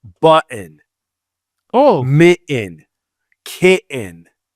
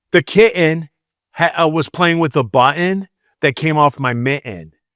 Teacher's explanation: any word that has TT in it, she doesn't pronounce it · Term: lazy Michigan speech